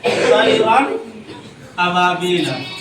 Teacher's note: یا طیرن ناک میں آواز لے جا کر نہیں پڑھیں گے